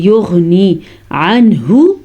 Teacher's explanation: نون کو ہم نے اظہار کے ساتھ پڑھنا ہے کیونکہ نون ساکن ہے اور نون ساکن کے بعد حروف ہلکی میں سے ہا آیا ہوا ہے